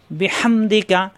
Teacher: সুবহানাকা আল্লাহুম্মা আল্লাহ ল হবে একালিফ টান হুম্মা অজিব গুন্না বিহামদিকা হা কণ্ঠনালীতে চাপ দিয়ে বিহামদিকা